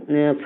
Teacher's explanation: फ बोलेंगे तो होठ से बोलेंगे। भ बोलेंगे भी तो भी होठ से बोलेंगे। दोनों होठ टच होगा ना। और ठ में तो नहीं टच हो रहा है और व में भी नहीं टच हो रहा है। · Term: ओष्ठ